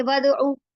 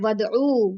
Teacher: आइन पेश वाव ऊ, वाव मद्दा, उसने आइन पेश को 2 हरकत जितना खींचा